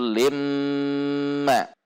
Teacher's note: Lin, kasrah tanwin di depannya huruf mim, maka kasrah tanwin masuk atau idgham kepada huruf mim dan dibaca gunnah, idgham bi gunnah, yaitu limma.